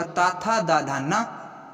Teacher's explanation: और दंत में क्या होगा? तो दंत में होगा ता, था, दा, धा, ना